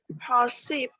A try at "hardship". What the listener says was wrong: Okay, let's try pronounce one more time with the D.